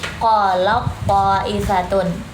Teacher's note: kalau idgham itu kan meleburkan huruf yang pertama, jadinya kita lebih bacanya seperti yang si to ini huruf yang kedua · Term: idgham mutajanisain